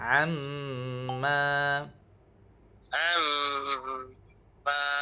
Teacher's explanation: mim yang ada tanda syaddah. Okey jadi kat sini automatiknya cikgu kena dengung dua harakat.